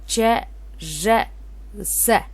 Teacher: Бул тыбыштарды айтканыбызда жарылмалар менен жылчыкчылдар жасалыш белгилери өз ара айкалышып турат. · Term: Бириккен үнсүздөргө